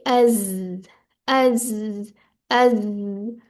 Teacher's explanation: उसमें buzzing sound सी आएगी, जैसे हम कहते होते हैं ना, मक्खी की आवाज निकालते हैं, वो वाली आवाज आएगी।